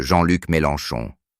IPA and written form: ʒɑ̃ lyk melɑ̃ʃɔ̃ (Jean-Luc Mélenchon)